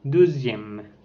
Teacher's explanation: c'est une voyelle antérieure mi-fermée, arrondie et orale. Par exemple, dans le mot deuxième.